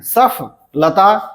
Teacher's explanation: यानी फ प अधिक बल दिया जाता है